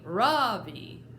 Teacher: In America, people call me Ravi, with the stress on the first syllable.